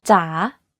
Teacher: and then goes up take for example the thai name da you can hear that my pitch went down slightly and then up · You can hear that my pitch went down slightly and then up when pronouncing this word. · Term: rising tone